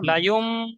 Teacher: ইম বলে আওয়াজটা ধরে রাখতে হবে, গুণনা করতে হবে তো। যেমন মাম বাকিলা ধরে রাখতে হয়, আওয়াজ গুণনা করতে হয়, ওই রকম লাইম বলে গুণনা করতে হবে।